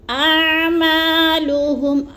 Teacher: اعما کو بھی تھوڑا سا لمبا کریں گے کیونکہ ادھر الف مدہ ہو رہا ہے ، الف خالی سے پہلے میم کے اوپر زبر ہے تو